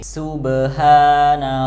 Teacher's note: di kata subhana, haknya itu pakai hak kecil yang keluar dari tengah tenggorokan.